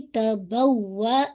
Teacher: واو پہ آپ کا نبر ہے، تھوڑی سی آواز آپ کی ایلیویٹ ہوگی